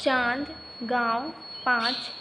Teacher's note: अनुनासिक का उच्चारण नाक और गले दोनों से किया जाता है, इसे चंद्रबिंदु भी कहते हैं।